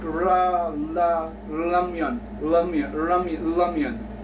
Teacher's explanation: It's actually R in the middle between R and L.